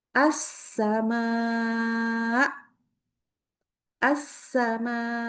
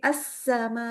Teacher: nabr atau menaikkan nada sedikit lalu dikasih tekanan yang kuat. Assama assama ya tekan tidak boleh menjadi assama.